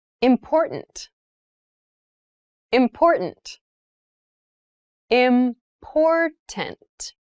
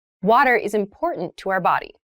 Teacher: that first T, is actually reduced. It sounds more like a D in fast speech.